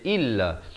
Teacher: Hamzah baris kasrah bunyi i, bukan bunyi e.